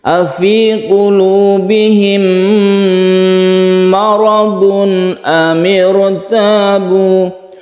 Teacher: mim bertemu dengan mim disebut dengan idgham mimi, kita panjangkan karena mim bertemu mim ini membentuk tasydid mim yang membacanya seperti gunnah musyaddadah. Kita dengungkan, kita tahan ketika membaca bihim.